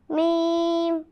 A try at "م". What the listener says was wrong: لمبا کیجیے میم.